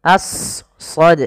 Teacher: huruf sad tebal, jangan as, jangan sin, tapi as, ya, a-nya tipis, sadnya tebal. Karena sad punya sifat huruf isti'la dan idbaq.